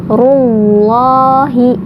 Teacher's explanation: Rullahi dibaca Allahnya tebal karena sebelum lafaz Allah ada huruf berharokat dhammah